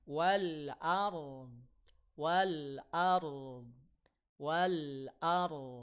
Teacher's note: huruf Dad itu istila pangkal lidahnya naik PLN makanya bunyi jadi tebal ya naikin pangk pangkal lidahnya walard